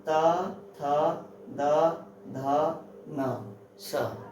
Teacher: जिनको हमारी जीवा दांतों को स्पर्श करे तो क्या होंगे? दंत्य व्यंजन कहलाते हैं।